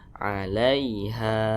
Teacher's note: Nah maka ini namanya Mad Thobi'i panjangnya dua harakat atau kira-kira dua ketukan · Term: mad tabi'i